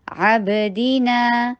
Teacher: علی عب، با کے پر قلقلہ، با کی آواز باؤنس ہوگی، دی، دال کے نیچے کسرہ، ای کی ساؤنڈ، نا ٹو حرکہ لانگ، عبدی، دی دیکھیں، دی ون حرکہ لانگ ہے اور نا ٹو حرکہ